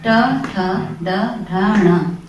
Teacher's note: उच्चारण स्थान के आधार पर 5 प्रकार की ध्वनियां हैं, जिनमें से मूर्धन्य ध्वनि होती है ट वर्ग की